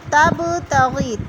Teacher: با پر قلقلہ ہے، اس کو ہلا کر پڑھنا ہے